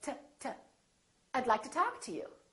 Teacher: we don't say to we say t I'd like to talk to you so don't say I'd like to talk to you reduce that vowel